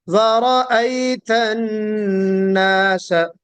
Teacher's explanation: ورأے پڑھیں گے اے تو پھر وہ غلط ہوگا، ای ہونا چاہیے